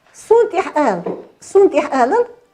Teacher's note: Глубокое гортанное произношение Х